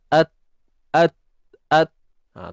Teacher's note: Hujung lidah berada pada pangkal gigi.